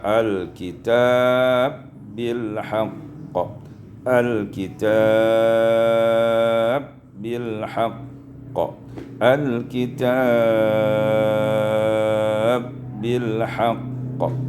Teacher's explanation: idghamul ba' fil ba', diidghamkan ba' pada ba'